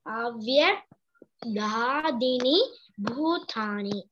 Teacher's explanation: only द भू is अ महाप्राण